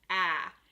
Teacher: When you are pronouncing ä, your tongue goes backward.